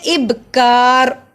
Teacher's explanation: اب پہ قلقلہ کیا کیونکہ با جزم کی صورت میں ہے